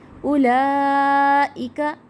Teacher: لا کو کھینچیں، کھڑا زبر ہے اور مد اس کے اوپر بڑی، جس کو ہم 5 سے 6 الف کے برابر جو ہے کھینچ کر پڑھیں گے